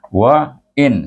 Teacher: satu harakat saja tak ada dengung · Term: izhar